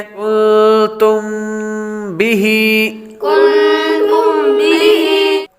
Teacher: میم ساکن کے بعد با آ رہا ہے تو اخفاء شفوی ہوگا، یعنی غنہ کریں گے